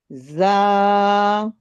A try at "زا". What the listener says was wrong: تھوڑا سا اور سیٹی.